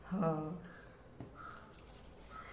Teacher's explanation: ह का उच्चारण स्थान कंठ होता है